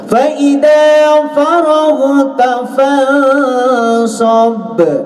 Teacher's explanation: Ya, sobnya di sini ada huruf hukumnya adalah disebut qalqalah kubro, anakku. Qalqalah kubro. Jadi pantulannya harus betul-betul tebal, ya.